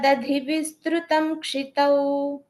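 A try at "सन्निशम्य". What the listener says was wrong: that first line after the comma, it's a double na there. San nishamya, not an im sound. It's an in sound. San nishamya.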